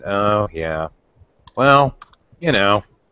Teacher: you're definitely gonna hear the intonation of you know the kind of low disappointment